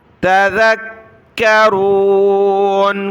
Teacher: کاف کو سخت کیا تشدید کی وجہ سے